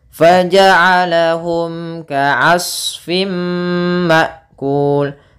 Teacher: nih mim mati harus jelas ketemu kaf.